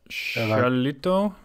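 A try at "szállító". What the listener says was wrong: So the only mistake you made is that SZ, we pronounce it as S, like the basic S letter in English. So it becomes Salito.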